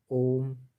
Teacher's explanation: लंबा खींच देते हैं, वही प्लुत स्वर हो जाता है